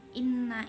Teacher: Inna ini bacaan ghunnah musyaddadah sebab Nun bertasydid